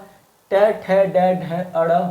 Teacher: ट ठ ड ढ अड़ मूर्धा में आएगा,